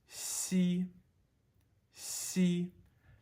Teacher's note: X is pronounced like an S blended in with an SH.